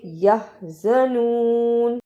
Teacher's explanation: اسے یازنون نہیں پڑھنا، ہاں کی آواز آنی چاہیے